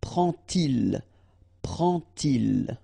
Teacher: And so this little d here is in red just to show you that you won't pronounce it like d to make the liaison, but you will pronounce it like t